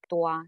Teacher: the diphthong here will be u plus a